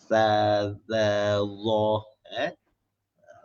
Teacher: Itu semua ke depan atas. Sama juga sa dengan za. Ini semua lidah keluar. Makhraj dia semua lidah kena keluar.